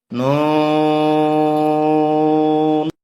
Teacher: 4 আলিফ টানতে হবে, জিহ্বার আগার তালুতে লাগবে